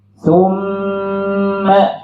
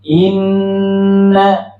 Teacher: Nun bertasydid dengan mim bertasydid. Nah, Ibu kalau bertemu dengan nun dan mim bertasydid nggak perlu dihentak. Cukup dilamakan saja.